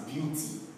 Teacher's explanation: when you have the word beauty, you are stressing the beau.